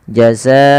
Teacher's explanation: Karena di sini ada bacaan namanya mad wajib muttasil, yaitu adanya mad yang disebabkan karena adanya hamzah yang terletak setelah huruf mad. Dan dia wajib kita panjangkan 4 atau 5 harakat